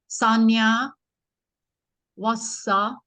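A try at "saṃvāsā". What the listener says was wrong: Vasa. Vasa. Long. I have to make it long.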